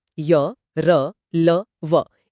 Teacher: इनके उच्चारण में जीभ पूरी तरह स्पर्श नहीं करती। इसलिए इनमें एक प्रवाह होता है स्वरों जैसा। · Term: अंतस्थ व्यंजन